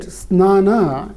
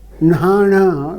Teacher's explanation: Sanskrit snana with an alveolar nasal, that means bath, changes in Marathi to nhana with a retroflex nasal